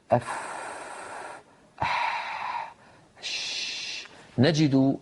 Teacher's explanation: وبالإضافة إلى هذا لو وضعنا يدنا هنا على الحنجرة وأعدنا نطق تلك الحروف أف أح أش، لا نجد اهتزازا هنا في الوترين الصوتيين في الحنجرة